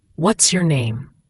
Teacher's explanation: The S links to the Y. The name has that long A sound, like in day. Try to connect it smoothly.